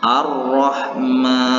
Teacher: ini contoh ini 40 Pro yang berbaris tasydid dan berbaris fathah maka hukum bacaan ro ini harus dibaca secara tafkhim atau tebal